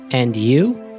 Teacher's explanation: please note that this is said with a rising intonation